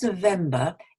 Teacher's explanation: it doesn't end in an r sound unless you're american because american is rhodic but um standard british english is non-rhotic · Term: schwa sound